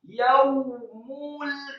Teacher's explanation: Dzalikal yaumul, kata yaumul, ya-nya dibaca fathah tipis 1 harokat, kemudian wawu sukun atau wawu matinya dibaca tebal, tafkhim dengan posisi mulut tertutup dan dengan gerakan yang agak cepat. Yaumul, kemudian mim yang marfu atau dhammah tanwin juga dibaca dengan posisi mulut tertutup, tebal.